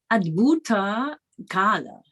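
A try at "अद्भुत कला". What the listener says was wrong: You have to be careful with those long and short syllables. Kala.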